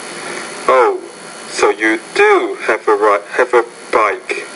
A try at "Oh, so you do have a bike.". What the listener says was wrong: So you're putting emphasis on do here, showing what's called emphatic expressions of surprise. Oh, so you do have a bike. So you could probably even raise your inflection and tone a little bit more there, but I think you're getting the point.